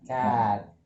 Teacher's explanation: Dia penggabungan antara bunyi a sama e, jadinya a. Cat. Dengan ekstra leher deh kalau perlu.